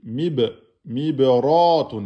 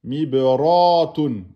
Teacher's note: la lettre ra est emphatique.